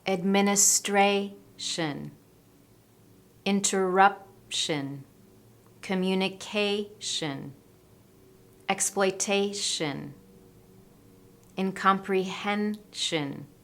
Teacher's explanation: I'm stressing the syllable just before -tion/-sion.